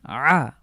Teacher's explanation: তিনটি হরফ দেখতে পাচ্ছি করুন প্রথম লেটারটির নাম হলো আইন আ অবশ্যই কন্ঠে চাপ দিতে হবে এটি হলো হলক থেকে উচ্চারিত হরফ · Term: কণ্ঠবর্ণ